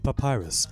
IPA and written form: pəˈpaɪrəs (Papyrus)